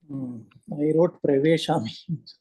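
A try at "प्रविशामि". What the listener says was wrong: No, it's pravishami. The dhatu is the vish dhatu, right? So here you have vishati, right? No guna taking place here. The vish, the V guna does not take place. The V guna takes place because of this siya.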